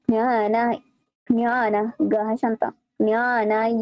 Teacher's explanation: জ্ঞান মানে এটা একদম শ্বাসের নাক দিয়ে একটু উচ্চারণ হবে